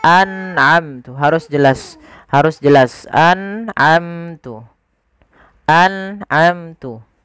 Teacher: An'amtu tidak boleh digaungkan atau dipantulkan. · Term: izhar halqi